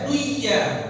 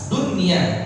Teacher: Dunia baca izhar, jelas. Enggak boleh dibaca duya.